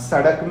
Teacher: 3 सकार होते हैं ना, एक दंतीय सकार जैसे सड़क में जो सकार है वो दंतीय सकार है